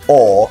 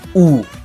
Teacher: the two most common rounded vowels that we have are the O sound, aw, and the U sound, oo, while the rest are unrounded.